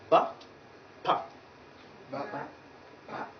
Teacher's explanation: you find that initially the air is completely blocked but then it is release with some force